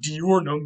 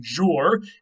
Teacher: the D and the Y sort of meld together to form a je sound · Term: palatalization